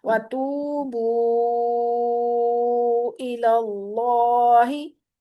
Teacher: अल्लाह का लाम मोटा पड़ा जाएगा।